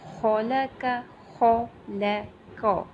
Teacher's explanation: خلق، خو جو ہے یہ موٹے حروف میں سے ہے، لام جو ہے اسے ہم نارمل پڑھیں گے، اور قوف جو ہے اس کو اگین ہم بھاری ساؤنڈ میں پڑھیں گے. لیکن یہاں پہ دیکھیے ان تینوں کی مقدار سیم ہوگی، کیونکہ تینوں کے اوپر فتحہ آ رہی ہے نا، زبر آ رہی ہے، تو تینوں کی مقدار سیم ہوگی.